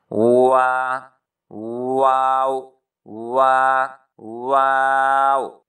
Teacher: हंठों को गोल करने से इसको वाऊ भी पढ़ते हैं